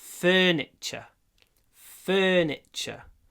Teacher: Не забудьте, что окончание T-U-R-E произносится ч.